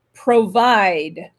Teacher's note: Accent tonique sur la seconde syllabe et pas la première comme je viens de le faire